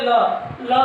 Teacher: ल बोलने पे जीभ आपकी दंत को स्पर्श कर रही है, दंत।